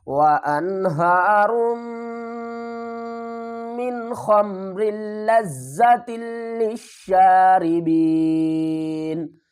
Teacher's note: وقف کی صورت میں ہم کیا کریں گے، نون کو ساکن کریں گے اور یہ جو یا ساکن ہے اس کو کھینچ کر پڑھیں گے